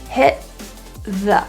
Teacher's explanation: So those T's are not released through the mouth, but kind of held in the glottis, hit. It's not a deletion or silence, but rather a pressure holding and then release. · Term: glottal T